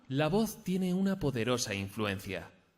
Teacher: le va a escuchar básicamente para intentar conseguir modificar esa monotonía vamos a intentar comenzar la frase en un tono agudo y acabar en grave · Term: entonación